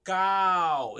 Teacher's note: Ele vai falar que essa letra aqui, ela é tanto longa, ela vai ter a sua participação dentro das vogais longas, quando ela tem o som de A, como em cal, observa. Cal, esse A ele é elevado, ele é longo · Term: Kamatz